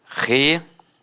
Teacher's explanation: Algumas pessoas dão uma extensão na fala e acabam falando relatório. Então, separa o O do I e fica assim, ó, relatório.